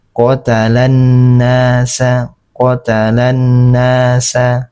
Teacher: Jadi cara membacanya langsung pada huruf nun, tidak terbaca lagi huruf lamnya ini. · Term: alif lam syamsiyah